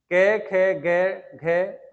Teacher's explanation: कंठ से बोले जाने वाले अक्षर क वर्ग के आते हैं